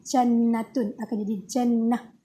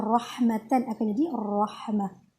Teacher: Bila berhenti bacaan padanya, ia dibaca ha bertanda sukun tanpa mad. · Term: ta marbutah